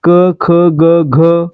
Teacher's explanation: क च्या गटाचा उच्चार करताना आपल्या घशातून म्हणजे कंठातून हवा बाहेर सोडली जाते म्हणून यांना आपण काय म्हणतोय कंठवर्ण म्हणतोय ठीक आहे म्हणजे आपलं